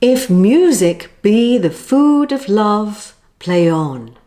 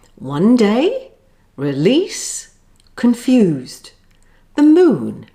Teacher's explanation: Notice there's an unstressed syllable followed by a stressed syllable. That's called an iamb.